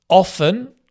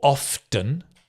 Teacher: some people pronounce the T, some people don't.